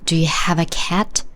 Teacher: stress is placed on have and cat. Stressed syllables are pronounced stronger, higher, and longer. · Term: stress accent